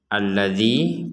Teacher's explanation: Alladzi kita baca dua ketukan karena bertemu dengan ya sukun yang dalam Quran Madinah sukunnya tidak tertulis tapi sudah terbiasa tidak tertulis.